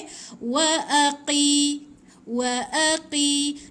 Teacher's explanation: Qaf ni dia macam jitu, bunyi dia dia tak ada angin, tak ada apa Wa aqi. Lepas tu dia macam dekat anak tekak dalam.